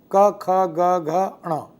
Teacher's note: और पहला और तीसरा अल्प प्राण होगा अर्थात दूसरा चौथा महाप्राण और पांचवा प्रत्येक वर्ग में अनुनासिक होगा · तो इसमें पहला और दूसरा अघोष होगा क ख, तीसरा चौथा पांचवा ये सघोष होगा